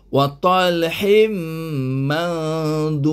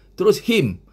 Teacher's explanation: Mim ini huruf idgham bigunnah. Jadi kita kena masukkan bunyi hin ke dalam bunyi mim. Jadi bunyi hin hilang, tinggal jadi bunyi him. Terus him. Macam English kata him. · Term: idgham biguna